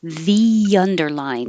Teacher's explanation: There's an invisible Y because when you say the, your tongue goes very high and then under it slides down. So that's where the Y comes from.